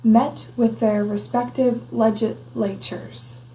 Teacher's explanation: there's a cough sound over the s so that s is not heard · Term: phonemic restoration effect